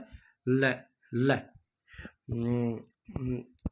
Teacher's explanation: जिस व्यंजन का उच्चारण करते समय वायु जीव्य के दोनों बगल से बाहर निकले वे पार्श्विक व्यंजन कहलाते हैं